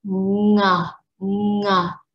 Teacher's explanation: So you use this glottal to stop the air, and then you drop, open your mouth, and get air coming out. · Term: ng sound